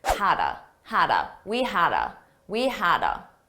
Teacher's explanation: I said, we had a blast last night. Notice how had a sounds like one word.